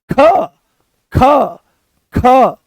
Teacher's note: संस्कृत व्याकरण में महाप्राण बताया जाता है जिनका उच्चारण पेट से होता है। तो जैसे ही आप बोलोगे ख तो बड़ी सरलता से निकल आया, पर जैसे ही बोलते हो आप ख तो जोर लगाना पड़ा।